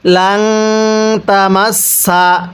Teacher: নুন সাকিনের পরে তা ইকফার হরফ থাকলে নুন সাকিনটিকে গুনাহ করে পড়তে হবে